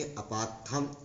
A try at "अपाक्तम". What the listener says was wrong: थम नहीं, तम। अरे अपाक्तम चल रहा है भाई, अपाक्तम ऐसे ही है। अपाक्तम, अपाक्त, थ कहाँ होगा? थ नहीं चल रहा है। ताम तम तामह होता है ना।